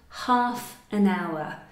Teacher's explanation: half, so a strong H, and hour, which is a silent H